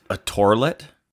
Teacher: The first L is an R instead.